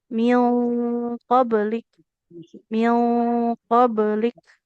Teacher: Ikfa itu dia akan tebal dan tipis atau tipis tergantung dari nun sukunnya berhadapan dengan huruf apa. Kalau huruf yang dia huruf tebal kayak qof ya, maka tebal juga.